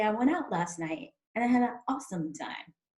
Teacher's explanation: I might actually just drop the T all together